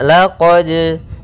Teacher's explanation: Pada bacaan laqad di sini ada hukum tajwid berupa qalqalah, yaitu suara dalnya. Apa itu qalqalah? Artinya memantul. Maka di sini kita harus mantulkan, ya, mantul.